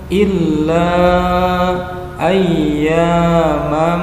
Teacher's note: Madhabi'i bertemu dengan alif atau hamzah di depannya menjadikan bacaan berubah panjangnya menjadi mad jaiz munfasil lima harokat